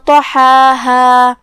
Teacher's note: کلمت طحاها میں یہاں حرف الطا ہے. طا بھی حروف تفخیم میں سے، لہذا اسے موٹی آواز میں ادا کریں گے. حرف الحا کو ہم حلق کے درمیان والے حصے سے ادا کریں گے.